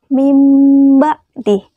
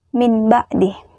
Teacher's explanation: Jadi, apabila ada nun mati bertemu dengan huruf ba, arti dari iklab tersebut adalah menggantikan suara nun mati, tanwan, tanwin, dan tanwun yang bertemu dengan huruf ba tersebut menjadi suara mim